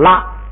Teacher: 挂，你看挂牙挂这个然都是还是读基字，可是这儿呢都按照基字来发音，可是这一挂拉呢，基字丢了，不管基字了，不管谁一挂拉都得读拉。但是这个拉呢也被迫的有点改变，就是它因为上边有一个基字带上一个帽， 一戴帽呢一压不敢升了，老老实实平声1声念拉